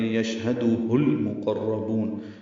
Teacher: یشہد میں یا کو شین سے ملانا ہے، اس پہ تفشی ہے، ہمس ہے شین پہ، ہاء سے حلق سے ادا کریں گے، دال کو جلدی اور معروف پڑھیں گے، ہاء کو لام سے ملا دیں گے، یشہدہ المقربون، یشہدہ تھا ملانے کی وجہ سے پیش ہوگی، لام ساکن پہ اظہار قمری، قاف را دونوں پر ہیں، با کو لمبا کرنا ہے، وقف مد عارض سکون ہے، نون ساکن پہ اظہار ہے۔